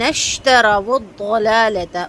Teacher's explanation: کر کے اس کے بعد واو کو ضاد سے ملائیں گے، واو کا پیش مکمل ہونٹ گول کر کے پڑھیں گے اور ضاد کو بہت اچھا سا پر کر کے پڑھنا ہے،